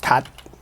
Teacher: It's like you don't open your mouth after the T. It's like cut. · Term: unreleased